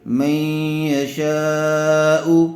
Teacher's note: نون ساکن کے بعد حروف یرملون میں سے یا آئی ہوئی ہے، اس لیے غنے کے ساتھ اخفا کر کے پڑھیں گے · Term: ادغام مع الغنہ